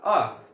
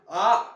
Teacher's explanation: इनके जो उच्चारण है उसमें हस्त स्वरों के उच्चारण से दुगुना समय लगता है। जैसे कि अ है ना, यहाँ पर आ है ना, एक अ बोला एकदम सिंपल सा अ, फिर उसके बाद आम का आ, ऐसा है ना, मतलब कि दुगुना समय अ है फिर आ, तो मतलब कि यहाँ पर क्या हो रहा है, दुगुना समय लगा। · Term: दीर्घ स्वर